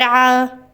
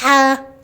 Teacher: عین، یہ دیکھیں بھرا ہوا ہے، گہرا گلے پر محسوس ہو رہا ہے، جبکہ ہا نرم سانس والا اور بغیر جھٹکے سے ادا ہو رہا ہے